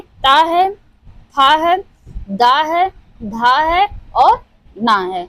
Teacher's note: दंतव्य से उच्चारित होने वाले ता वर्ग। ता वर्ग जो हमारा है वो दंतव्य से उच्चारित होता है। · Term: दंतव्य ध्वनि